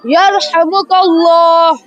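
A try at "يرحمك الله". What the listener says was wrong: Make the lam thick. Yarhamukallah.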